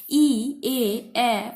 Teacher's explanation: ই এ উচ্চারণ করার সময় তোমরা দেখো ঠোঁটের যে মানে ওষ্ঠ এবং অধর দুটো অংশই কিন্তু ছড়িয়ে পড়ছে, বেশ প্রসারিত হচ্ছে। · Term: প্রসারিত স্বরধ্বনি